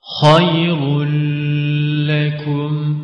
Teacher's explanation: sakin nun ya da tenvinden sonra lam harfi geldiğinde nun sesi lam harfine katılarak okunur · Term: idgamı bila gunne